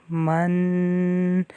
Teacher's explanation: اب یہ جو غنہ ہو رہا ہے یہ آواز جو ہے ناک میں جا رہی ہے اور اس کو اخفا کہا جاتا ہے، یعنی آواز کو چھپانا۔